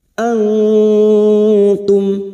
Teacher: nun sukun bertemu ta ikfa hakiki, kita semarkan bunyi nun sukun dan mendengung selama 3 harakat